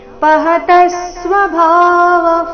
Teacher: ಪಹತಸ್ವ ತ ಮೇಲೆ ಆಘಾತ